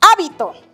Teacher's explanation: Está la mayor fuerza de voz en la antepenúltima sílaba. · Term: palabra esdrújula